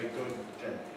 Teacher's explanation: We had an approach at the end of good. We had a release at the beginning of day, but between them we had a long hold.